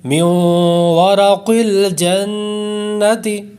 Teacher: پہلا ہم نے غنہ کیا ہے ادغام یرملون کا، اور دوسرا ہم نے غنہ کیا ہے نون مشدد کا، کیونکہ نون مشدد میں بھی ہمیشہ غنہ ہوتا ہے اور ادغام یرملون میں بھی ہم نے غنہ کرنا ہے، فلہٰذا یہاں دو غنے ہو گئے، میوں ورق الجنتی۔